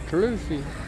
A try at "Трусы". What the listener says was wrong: Honey, letter R you have to learn. Listen. True. True. True. Трусы.